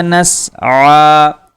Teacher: عین کے اوپر کھڑا زبر ہے جس کی وجہ سے عین کو ہم کھینچیں گے